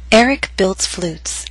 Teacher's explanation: flutes had one syllable so our voice glided down